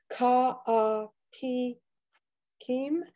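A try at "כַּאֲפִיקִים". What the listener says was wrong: It's a ka a fi kim because there's no dot in the pay.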